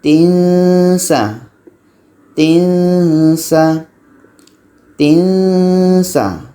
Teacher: Kita sudah bunyikan samar di sini. Ketika sebut huruf tanwin, seolah-olah kita sudah merasakan huruf sin. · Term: Tanwin bertemu sin